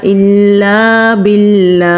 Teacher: لفظ اللہ میں جو لام ہے اس کو لام جلالہ کہتے ہیں تو لام جلالہ سے پہلے اگر زیر ہو تو لام جلالہ کو باریک پڑھتے ہیں۔ لام کے اوپر کھڑی زبر ہے تو کھڑی زبر کو 1 الف کے برابر کھینچ کر پڑھیں گے۔